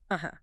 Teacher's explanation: If you say it with a quick falling pitch. Uh-huh. That's simple agreement. I get it. But if you say it with a rising pitch, uh-huh, that's a question.